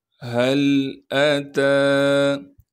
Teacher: حمزہ کو بغیر کھینچے پڑھنا ہے، بغیر جھٹکے کے پڑھیں گے۔ تا پر کڑا زبر ہونے کی وجہ سے تا کو ایک الف کے مقدار کھینچیں گے۔ · ہاں کو صاف کر کے گلے سے نکالیں گے، گلے کا وہ حصہ جو سینے کی جانب ہے۔ ہاں کو لام سے ملائیں گے اس لیے کہ لام ساکن ہے۔